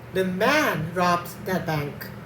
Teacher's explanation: The man is stressed. It means not a woman. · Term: sentence stress